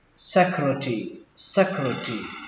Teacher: các bạn nối chữ T này với chữ R luôn thành chữ trì.